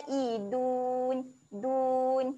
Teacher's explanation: Makhraj huruf dal, hujung lidah cucuk belakang gigi atas. Okey, jadi bunyi dia dal dia lembut saja.